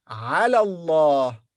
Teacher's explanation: The alif here in the beginning of the word Allah becomes silent.